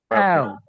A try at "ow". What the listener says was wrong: অ্যাও। একেবারে এ না, এই জন্য বললাম এটা একটু বলা মুশকিল, একেবারে এ না। আপনি আই বলবেন, চলটা একটু just সামনে আসবে, অ্যাও, অ্যাও,